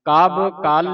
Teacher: ਕੱਲ ਭਾਰਾ ਬੋਲਣਾ ਕਬ ਪੋਲਾ ਬੋਲਣਾ ਕੱਲ ਤੇ ਜੋਰ ਲਾ ਕੇ ਬੋਲਣਾ